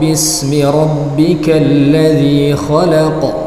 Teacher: di sini ada huruf qaf yang dalam keadaan sukun dia Qalqalah